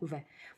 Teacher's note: वह जब बोलते हैं तो ओष्ठ में भी मूवमेंट होता है और हमारी जो जीविया है वो दांत को भी टच करती है। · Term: दंतुष्ठ, दंतोष्ठ